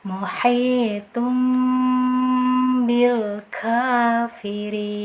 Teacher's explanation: Tanwin dhammahnya di sini kita hilangkan secara sempurna, kita ganti dengan huruf mim. Nah, mim yang sempurna pula secara pengucapan.